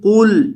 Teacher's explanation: قل، یہ جو ہمارے پاس پہلا لفظ ہے اس کے اندر قاف کو موٹا کریں گے۔ یہ جو قاف ہے دو نقطوں والا، اسے پر کیا جائے گا کیونکہ یہ ہمیشہ موٹا پڑا جاتا ہے